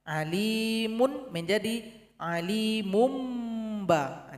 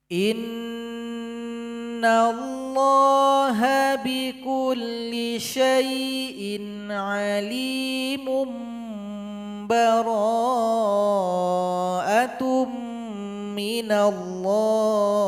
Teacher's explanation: Karena di situ ada tanwin berjumpa dengan ba, maka berikan iqlabnya. Alimun menjadi alimum ba. Jadi didengungkan di situ.